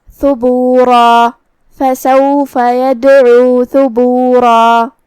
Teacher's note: یہاں را ہے اور اس پہ تنوین زبر ہے تو یہاں را کا حکم ہے تفخیم، ہمیں اسے بھاری آواز میں ادا کرنا ہے. جو کہ اس کے بعد مد الف ہے تو ہم را کو اور مد الف کو دونوں کو تفخیم سے ادا کریں گے.